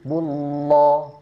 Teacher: Jadi kalaupun mau ditambah o ini jangan vokal o bulat sempurna bullo. Bukan bullo ya tapi bulo. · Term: tafhim